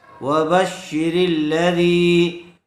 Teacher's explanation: زیر والے حرف کے بعد یا ساکن آئی ہوئی ہے، یا مدہ ہوگا، تھوڑا کھینچ کر پڑھیں گے